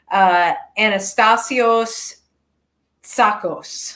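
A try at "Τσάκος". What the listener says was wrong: Tsakos, yeah, the T is silent.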